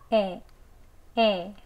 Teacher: 턱 아래로 살짝 떨궈서 조금 벌어지면서 소리는 에라고 냅니다.